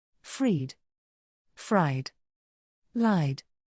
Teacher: vowel sound it should be pronounced as a voice d d because vowels are always voiced